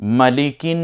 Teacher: এখানে নুনটা একটু গুন্না করে পড়তে হবে, কারণ মিম এবং নুনে তাসদিদ হলে গুন্না করে হয়